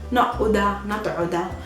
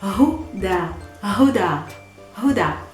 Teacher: Hu with an H, and like aspirated H.